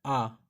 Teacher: जिन वर्णों को बोलते समय मुख का पूरा द्वार खुल जाए तो उसे वृत्तमुखी कहते हैं।